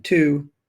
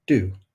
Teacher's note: bringing the tip or blade of our tongue into contact with the alveolar Ridge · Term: alveolar sounds